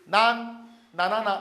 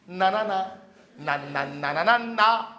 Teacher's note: 그래서 이 니은 발음은 니은이 들어가는 발음 그리고 니은 계통에 있는 리을은 전부 다 혀가 윗 입천장에 붙어야 돼요. 니은은 전부 입천장에 혀가 가다가 위에 붙어야 돼요. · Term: 혀소리